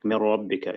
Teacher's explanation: the ra and the lam are ones that you merge straight away without the ghunna, without the nasal sound